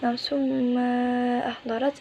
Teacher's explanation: meleburkan tanwin tersebut ke dalam huruf mim disertai dengan dengungan selama satu alif atau dua harokat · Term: idgham bihuna